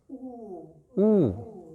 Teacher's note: Picture doing what some of us did in primary school, sticking a pencil in your mouth and between your lips and just making little ooh. So there's a small channel of air. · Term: rounding